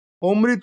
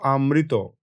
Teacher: শব্দের শুরুতে অ যদি থাকে এবং তার উপর জোর বা শ্বাসাঘাত পড়ে, তবে সেই অ অনেক সময় হয়ে যায় আ